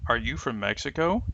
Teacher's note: notice how the voice will rise in pitch on the word Mexico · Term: rising pitch